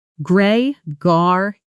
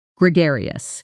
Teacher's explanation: The stress is on the second syllable and that gar sounds like the word car with a g.